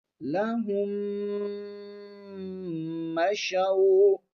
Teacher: ہیں، تو میم کو میم مشدد میں ملا دیا گیا ہے، ایک ہی میم ہم نے پڑھنی ہے میم مشدد، اور غنے کے ساتھ پڑھیں گے کیونکہ میم پر شد ہے